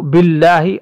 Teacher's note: اللہ کے لام سے پہلے زیر آنے کی وجہ سے اس کو ہم باریک پڑھیں گے